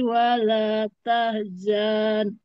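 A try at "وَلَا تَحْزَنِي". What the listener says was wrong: Kurang satu huruf. Kurang mad tabi'inya.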